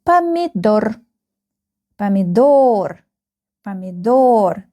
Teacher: The last syllable is stressed.